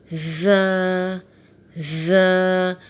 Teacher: ز سیٹی والے حروف میں سے ہے، اسے سختی کے ساتھ ادا کریں گے، ز، ز۔ ز کو کھول کے لکھا ہوا ہے تو اس کے ساتھ ایک الف لکھی ہوئی ہے تو اسے بھی ایک الف کے برابر کھینچ کے پڑھیں گے، ز۔